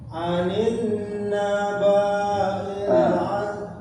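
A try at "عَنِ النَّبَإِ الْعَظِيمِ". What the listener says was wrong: Ba sama i itu bukan mad ya. Alif itu alif ulang. Anin Anin naba'il Jadi setiap huruf yang enggak ada padnya jangan dipanjangkan atau diberi jeda berhentinya terlalu lama.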